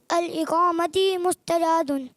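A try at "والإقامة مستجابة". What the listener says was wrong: ال نہیں ول، ہاں اقامتی مستجابن، میں نے با اتنا کھول کے بتایا تھا، والاقامتی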